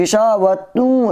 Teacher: اگر ہم اس پر آیت کریں گے، اگر ٹھہریں گے، سانس توڑیں گے تو گشا وہ تو نہیں بولیں گے، یہاں گشا وہ بولیں گے، ہا کی آواز نکالیں گے۔ اگر ملا کے بولیں گے تو پھر اس تا کو واو سے ملا دیں گے ادغام کے ساتھ، ایسے بولیں گے گشا و تو، تا واو دو پیش تو، غشا و تو۔